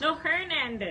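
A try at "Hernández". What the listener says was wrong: It's not her. There's no her in Hernandez.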